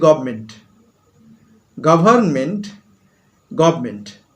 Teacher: একটা দন্ত ন আছে, কিন্তু আমি বলছি গভর্নমেন্ট, নয়ের উচ্চারণটা করলামই না। অর্থাৎ ধ্বনি পরিবর্তন হচ্ছে উচ্চারণের দ্রুততার জন্য।